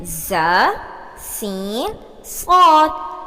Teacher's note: حروف صفیریہ 3 ہیں: ز، سین، صاد۔ زبان کی نوک اور سامنے اوپر نیچے 2 دانتوں کے اندرونی کنارے سے ادا ہوتے ہیں۔